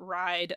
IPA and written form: ɹaid (ride)